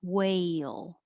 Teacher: your tongue rises when you say way, and then it should be in a very high position and then slide down for the L. Whale.